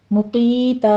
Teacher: और मक़ीता नहीं है, ऊपर देखिए ज़म्मा है। मुक़ीता क़ौफ़ को पुर पढ़ते हुए या मद्दा अदा करेंगे और आखिर पर वक्फ़े इब्दाल कर लेना है, टू काउंट कर लेंगे।